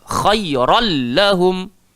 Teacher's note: Bila tanwin bertemu lam, idgham bila gunnah, memasukkan tanpa dengung.